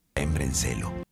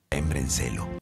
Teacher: La vocal A fue omitida. Por eso parece que está diciendo brencelo. Celo. La pronunciación recomendada es embraencelo, con una transición suave de la A a la E.